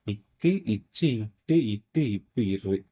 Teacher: இந்த வல்லின எழுத்து எதை வந்து இடமாக கொண்டு பிறக்கும் அப்படின்னா மார்பு மார்பை வந்து இடமாகக் கொண்டு பிறக்கும்